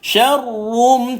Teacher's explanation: Ra ini dia ada sifat getar. Tapi bila dia sabdu, getar dia kena lagi kurang. Jangan dengar sangat bunyi dia.